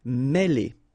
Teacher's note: accent circonflexe here on the top of E, and it will give you the sound E. Really open